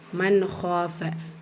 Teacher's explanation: கூடவே அலிஃப் மத்தா இருக்கு இரண்டு ஹரக்கத் அளவு நீட்டம் கொடுத்து ஓதணும் மன்ஹாப நூன் சுகூனை தொடர்ந்து லெட்டர் ஹா வந்திருக்கு இது ஹாரு உடைய சட்டம் உள்ளதை உள்ள மாதிரியே ஓதிரனும் குன்னா செய்யக்கூடாது